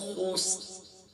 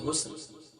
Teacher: ہیں والعصر إن الإنسان لفي خسر خسر نہیں یہاں خا ہے خا گلے کے ٹاپ سے موٹی بھی ہوگی